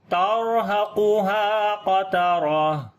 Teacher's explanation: قاف کو موٹا پڑھیں گے، اس قاف کو بھی موٹا پڑھیں گے، تا کو باریک پڑھیں گے، را کو پھر موٹا پڑھیں گے · جب رکیں گے تو تا ہا بن جائے گی، اور اس کے اوپر صفت ہمس آ جائے گی · را کو موٹا پڑھیں گے، را کے اوپر جزم اس سے پہلے زبر ہے ، اس وجہ سے ہا کو لمبا کریں گے، الف مدہ